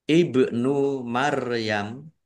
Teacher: ba sukun bacaan qalqalah dibaca memantul ditampakkan pantulannya